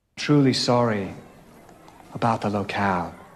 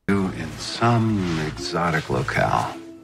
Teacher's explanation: In British English, it's an R sound for the A, and in American English, it's an A sound.